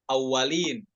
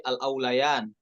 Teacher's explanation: Al-aulayan bukan dibaca awalin ya, tapi al-aulayan, wawunya sukun bukan tasydid